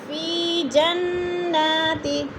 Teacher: نون مشدد ہے، سختی سے جما کر پڑھیں گے